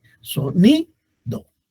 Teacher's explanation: En la palabra sonido, la sílaba tónica es ni.